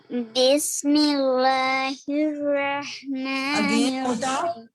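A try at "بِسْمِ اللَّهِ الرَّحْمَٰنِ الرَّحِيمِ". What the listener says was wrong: Again موٹا پڑھ رہی ہیں آپ. بسم اللہ الرحمن الرحیم.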